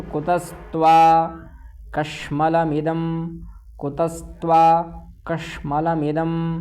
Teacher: कश्मल में जो है वो तालव्य षकार है